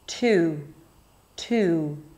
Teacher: And then I close it with a round oo sound.